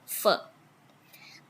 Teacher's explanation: labiodental. Lower lips touches the upper front teeth